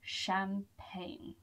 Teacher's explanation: Don't be fooled by the G in there. The G is not pronounced.